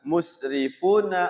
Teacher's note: Ra-nya dibaca tarqiq tipis kasra ya.